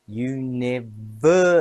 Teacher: University has 5 syllables. Stress on ver.